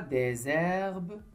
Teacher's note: sur le mot herbe, j'ai mis la liaison, j'ai dit des herbes